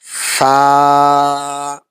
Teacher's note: জিহ্বার আগাটা সামনের উপরের দাঁতের আগার সাথে লাগাতে হবে। ২ দাঁতের আগার সাথে লাগাবেন।